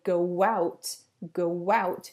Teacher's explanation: when you say go out, you add a little w sound to make it easier to join together the vowels in the two words